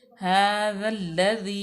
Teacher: और उसके बाद दाल अलिफ, दाल अलिफ ये भी ज़ायद है, अलिफ भी ज़ायद है, लाम लाम तरीफ़ के बाद लाम आ गया हरूफ शमसिया में से, तो यहाँ पे ज़ा को लाम में मुदगम करेंगे, मिला के पढ़ेंगे